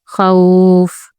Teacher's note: जब वाऊ लीन या लीन के बाद वफ किया जाए तो आवाज लंबी हो जाती है।